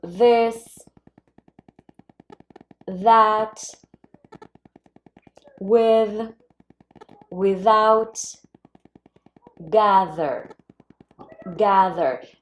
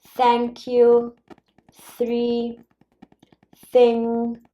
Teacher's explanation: So, basically the point of articulation is the same. The only difference is that in one sound the vocal cords are going to vibrate and in the other sound they are not.